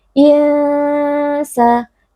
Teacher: Insa, ikhfa hakiki, karena ada nun sukun bertemu dengan salah satu huruf ikhfa yaitu huruf sin, dibaca dengan dengung yang disamarkan. Sa. Mad tabi'i, karena ada alif sebelumnya berharakat fathah, dibaca panjang 2 harakat.